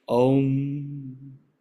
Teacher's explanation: om begins from the back of the throat ooh is inside the mouth m is the lips leaving the mouth